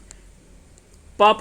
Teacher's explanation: ओष्ठ से उसका उच्चारण होता है